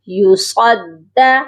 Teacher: دال کو سختی سے پڑھیں گے کیونکہ دال کے اوپر تشدید ہے